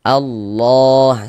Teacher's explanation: Sehingganya lafaz Allah kita baca panjang. Mad thobbi'i panjangnya dua harakat. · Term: Mad tabi'i